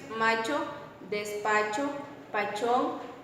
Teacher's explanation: la articulación de la vocal la sobre todo en la sílaba fuerte se hace un poco palatal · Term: A palatal